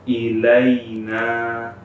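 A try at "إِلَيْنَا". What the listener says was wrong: Ya, dipanjangkan sedikit, ya, karena harus beda. Tadi kemarin di video sebelumnya kita sebutkan bahwa kalau sudah sampai pada materi mat, maka harus benar-benar beda mana huruf yang dia benar-benar pendek, mana huruf yang mana dia ada matnya.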